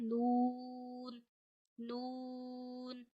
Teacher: आप जबान के किनारे और ऊपर के दांतों की जड़ों से अदा करते हैं।